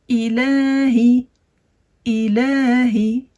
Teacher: on va prolonger le lem de 2 temps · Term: prolongation de 2 temps